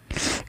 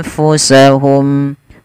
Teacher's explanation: Ada nun mati ketemu fa, ada bacaan ikhfa. Kemudian samarkan huruf nunnya kepada huruf fa sambil ditahan